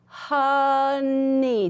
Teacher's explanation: the O kind of, it kind of sounds more like a short U sometimes